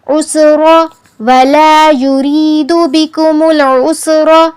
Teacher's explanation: بکم العسر کے را کو ہم نے پر پڑھنا ہے کیونکہ وہاں پر زبر آئی ہے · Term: تفخیم